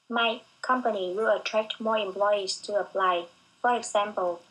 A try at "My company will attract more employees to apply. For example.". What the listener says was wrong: Again, you're too choppy.